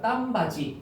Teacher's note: 디귿이 지으로 바뀐 다음에 뒤로 넘어가니까 딴바지 이렇게 되는 겁니다